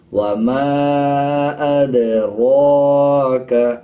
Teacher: اسی طرح اگر را کے اوپر زبر آ جائے، کھڑا زبر آ جائے یا پیش آ جائے تب را کو پر پڑھا جاتا ہے، یعنی موٹا پڑھا جاتا ہے، جیسے اس میں پڑھا جا رہا ہے وَمَا أَدْرَاكَ۔